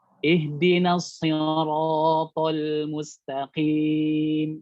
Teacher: Jangan to-nya jadi ikut-ikutan sama tebal dengan huruf ro. Jadi sedikit kadarnya antum turunkan sedikit. · Maka huruf to ini tidak boleh lebih tebal dilafadzkannya ya dibanding dengan huruf ro yang fathah diikuti alif. Maka huruf ro ini harus lebih tebal dari huruf to.